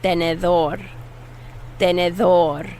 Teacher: this d is the soft airy th sound it's like a th sound in english you kind of put your tongue between your teeth and blow